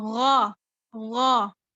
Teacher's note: اس کو آپ نے گا نہیں پڑھنا، گ کی ساؤنڈ نہیں ہے بلکہ غا